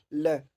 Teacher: जिनके उच्चारण में जीवा का अगला भाग मसूड़े को छूता है तो वायु पार्श्व आसपास से निकल जाती है, वे पार्श्विक शब्द है।